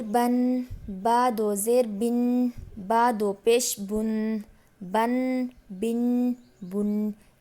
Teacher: با دو زبر بن، با دو زیر بن، با دو پیش بن، بن بن بن۔ تھوڑی سی ناک میں آواز لے کر جانی ہے اور اسے ٹھہرانا ہے۔